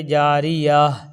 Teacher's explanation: جیسے جاریتن سے جاریہ، جاریتن سے جاریہ، یعنی جاریتن لکھا ہے، اگر وہاں رکنا ہے تا پر تو جاریہ پڑھیں گے، جاریہ، یعنی تا کے بجائے ہا کی آواز آئے گی۔ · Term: ہائے ساکنہ